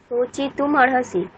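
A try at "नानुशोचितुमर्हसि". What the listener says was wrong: মানে ওই যে আপনি অকারটাকে বিচ্ছেদ করে দিচ্ছেন ম আর অটাকে, সেরকম না, মরহসি। যেটাকে অর্হসি বলছেন সেটাকে মরহসি বলতে হবে।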